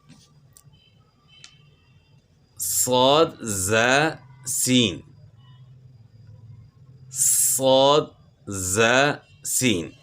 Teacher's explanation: تو اب اس کا مخرج کیا ہے؟ صاد ز سین، زبان کی نوک جب ثنایا سفلی کے کنارے سے ٹکرانے کے ساتھ ساتھ ثنایا علیہ سے بھی لگے تو یہ حروف ادا ہوتے ہیں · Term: حروف صفیریہ